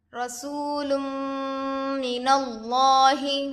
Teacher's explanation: لام پر 2 پیش ہے، تنوین ہوگا. تنوین کے بعد حروف یرملون میں سے میم دوسرے کلمے میں آ کر ہے، اس لیے غنے کے ساتھ ملا کر پڑھیں گے. اس کو ادغام مع الغنہ اور ادغام ناقص بھی کہتے ہیں. · را پر زبر کی حرکت ہے، جلد پڑھے، اور را پر زبر ہونے سے را کو پر پڑھیں گے. واو ساکن سے پہلے پیش ہے، واو مدہ ہوگا، تھوڑا کھینچیں اور معروف پڑھیں.